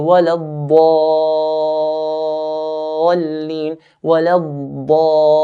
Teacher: when I stretched this med to 6 counts, once I finish stretching, I make a little jump to the next letter.